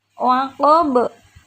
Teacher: ada ba yang diwaqafkan, maka hukum bacaannya adalah qalqalah kubra. Qalqalah dibaca memantul.